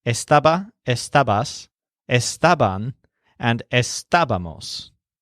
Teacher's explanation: all of the words that we just learned have the main stress on the syllable stab